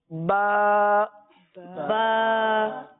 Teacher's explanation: تو با کی جو ادائیگی ہے وہ دونوں ہونٹوں کے تر حصے سے یہ ادا ہوتا ہے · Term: با کا مخرج